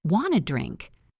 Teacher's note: The grammar is incomplete, but the meaning is clear because of the context and the rising intonation.